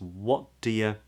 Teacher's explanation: the word do, as well as the word you actually, can be pronounced as weak forms, which means that the vowel in do and you can be pronounced as a schwa.